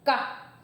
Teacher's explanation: Mas quando eu vou fazer do K, não tem reação, surdo